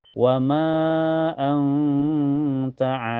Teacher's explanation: nun sukunnya disamarkan ke ta dan ditahan sampai kerasa ke hidung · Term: ikhfa